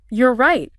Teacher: if you say it with your voice going down it just sounds like you're stating a fact